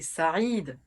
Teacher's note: toutes les voyelles en Arab peuvent être allongé donc en fait c'est Saï c'est le I qui est long